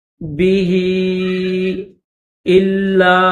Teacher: ہاں کے اوپر چھوٹی مد ہے، 3 الف کی لمٹ میں کھینچیں گے